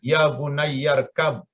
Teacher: tapi kalau dibacanya sambung apalagi karena seringnya pengucapan Nata menimbulkan kecepatan sehingga bersambung maka Hamzah itu tidak dibaca dihilangkan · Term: Hamzah itu terhapus